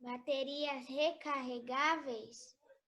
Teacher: palavras paroxítonas com acento na penúltima sílaba